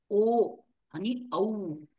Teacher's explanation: ओठ आपले गोल होतात आणि कंठामधून वायूचा स्पर्श होतो. ओ आणि औ म्हणून त्यांचं 2 उच्चारण स्थान आहेत, कंठ आणि ओष्ठ.